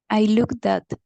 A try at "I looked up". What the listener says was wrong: Okay, it's correct, but the last letter is a P, not a T. It's not I looked at. I looked up.